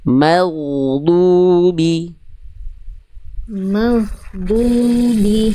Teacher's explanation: Berarti mimnya tipiskan dulu baru ketebalkan huruf ginnya. · Tadi saya dengar agak agak kayak ada nafasnya. Huruf gin jangan sampai keluar ada nafasnya.